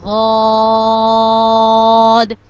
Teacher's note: غاد کو ہم 5 الف کے برابر لمبا کریں گے، غاد۔ اور اس کو تھوڑا موٹا بھی کریں گے، غاد۔